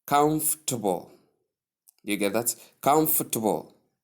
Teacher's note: the stress comes only on the first syllable and then the other ones are softened then tip the correct way sounds more like comfortable you get that comfortable you get that so it's as though we don't pronounce much of the second syllable but we do.